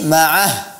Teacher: Kemudian pada saat berhenti pada kata ma'ah, ya, walladzina amanu ma'ah, dijelaskan huruf ha-nya, bukan walladzina ma'ahu, walladzina amanu ma'ah, bukan ma'ah, tapi ma'ah, hurufnya ha yang dipangkal tenggorokan. Ini catatan.